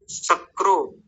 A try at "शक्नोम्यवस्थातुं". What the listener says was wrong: सक्नो, ये न है, क के नीचे र नहीं है।